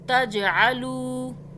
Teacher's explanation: لام واو پیش لو ایک الف کے برابر کھینچا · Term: مدہ